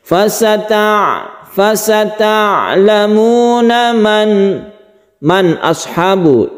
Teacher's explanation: Kami mengucapkannya dengan jelas karena ini adalah ' izhar halqi'. Pertemuan 'nun sukun' dengan 'hamzah'.